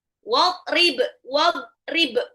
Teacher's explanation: Dad itu keluarnya itu pakai lidah tepi lidah kanan dan kiri ketemu sama gigi atas